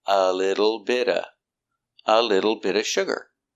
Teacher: The T in bit is between vowels, so it changes to a fast D too.